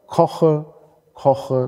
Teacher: da haben Sie ein velares K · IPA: ˈkʰɔxə